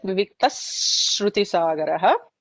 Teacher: Viviktaha with a Visarga, followed by a Shru in the Shruti Sagaraha. So that becomes Visarga followed by any sibilant. We'll just add that extra emphasis on s. There is an extra S there.